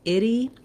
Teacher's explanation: our ity ending is very typical in English that we do the lax I sound with a flap and the tense E sound. And by that I mean it sounds like itty.